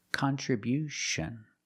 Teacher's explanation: at the end with T-I-O-N, you hear the sound sh